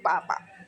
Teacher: तो आपके दोनों हंठ मिलते हैं। इसलिए वे पै ओष्ठ वर्ग होते हैं।